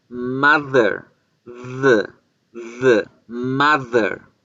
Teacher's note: los dientes no van a permitir que la lengua salga la lengua toca la parte de atrás de los dientes